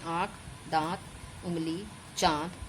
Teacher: जब बोलते समय हवा जो है वो मुख एवं नासिका दोनों से निकलती है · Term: अनुनासिक